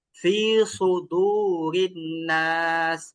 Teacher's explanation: সদ বললে মুখটা ভরপুর, একটা ভারী ভারী ভাব নিয়ে আসতে হবে। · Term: সদের উচ্চারণ